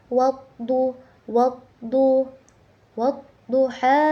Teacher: Di situ terdapat ee hukum tajwid alif lam syamsiyah. Karena alif bertemu dengan huruf syamsiyah, maka dibacanya itu ditasdidkan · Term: alif lam syamsiah